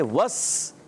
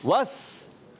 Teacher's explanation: वाव की अदायगी होठों की गोलाई से